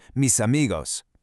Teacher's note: And the same exact thing happens when a word ends in a consonant and the next one starts with a vowel. That consonant basically jumps ship and joins the next word. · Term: connected speech